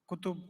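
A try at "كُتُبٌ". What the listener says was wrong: Kutubun. Now notice kutubun and kitabun. Don't they both have an ending sound? When you have a broken plural, it also has ending sounds.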